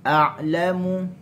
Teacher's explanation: Buka mulut luas. Kenapa? Kerana dia sukun dan dia adalah huruf yang keluar daripada halqi. Okey, jangan baca a'lam tak, dia bukaan sukun dia makin luas lah. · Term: huruf ain